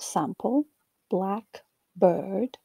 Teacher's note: relatively compressed and both syllables are of similar length black bird the adjective noun pair black bird also exhibits a clear pitch reset at the beginning of the second word